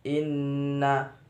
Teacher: Ha bacaan mad tabi'i sebab fathah bertemu alif. Inna bacaan gunah sebab nun bertasdid